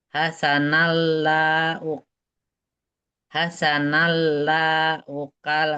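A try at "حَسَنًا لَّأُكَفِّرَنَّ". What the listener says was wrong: La-nya nggak panjang. Hasanallahu. Lamnya pendek.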